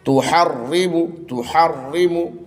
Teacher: تحرم تحرم یہاں پر بھی را کو جو ہے باریک پڑھیں گے پتلا پڑھیں گے. تحرم رائے مشددہ کے اوپر زیر ہے اس لیے اس کو ہم پتلا پڑھیں گے